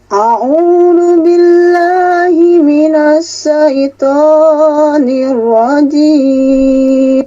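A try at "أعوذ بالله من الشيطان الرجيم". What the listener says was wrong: Masih nahawan, Bu. A'udzu billahi, itu nahawan. Kalau bayati a'udzu billah, a'u-nya jangan naik gitu, jangan a'u tapi a'u gitu, ya.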